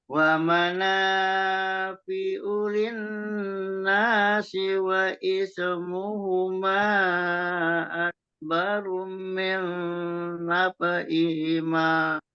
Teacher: Cuman di ak-nya jangan sampai memantul.